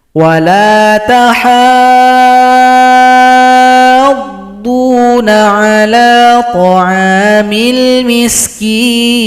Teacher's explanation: Panjangkan ha 6 ketukan atau 6 harokat, baru tasydid pada huruf dhad. Ini adalah mad lazim muthaqqal kalimi.